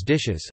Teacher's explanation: in plurals such as dishes, a vowel is added before the -s